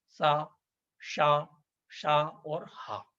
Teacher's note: से होता है या रा ला वा ऐसे व्यंजन चार हैं जिनका उच्चारण करने पर ज्यादा ऊष्मा निशत होती है ज्यादा ऊर्जा लगती है ज्यादा जोर देना पड़ता है